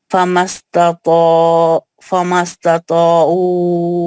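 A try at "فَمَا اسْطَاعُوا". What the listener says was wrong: نہیں وہاں پہ دو تانی ہیں، ایک ہی تا ہے.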